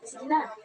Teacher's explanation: mayroong pagtaas ng boses sa unang pantig at mababang tunog na ikalawang pantig.